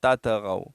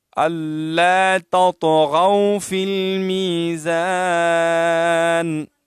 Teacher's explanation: تا اور طا میں فرق ہے، تا باریک ادا ہوتی ہے اور طا موٹی پڑھی جاتی ہے. اور طا ساکنہ ہے، اس میں قلقلہ بھی ہے.